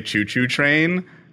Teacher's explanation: you don't pronounce the T in train like T, it's CH